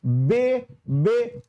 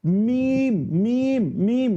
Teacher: मतलब जिस हुरूफ के अदायगी में दोनों होंठ सट जाता हो उसी को बोलते हैं हुरूफ शफवी